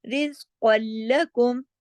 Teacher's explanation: قاف جو ہے وہ لام میں جا کے ضم ہو رہا ہے نا, ادغام ہو رہا ہے, لیکن کوئی غنہ نہیں ہے. یہ ہوتا ہے ادغام تام بلا غنہ, بغیر غنے کے, ٹھیک ہے.